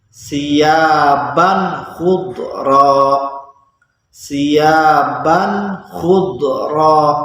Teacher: Tanwin bertemu dengan huruf kha, maka baca tanwinnya harus jelas. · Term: bacaan idhar